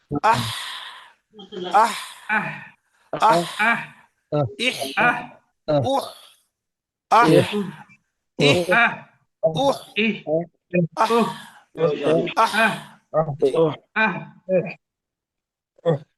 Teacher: ہا درمیان حلق سے نکلے گی